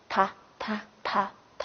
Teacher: 它的发音部位是舌尖中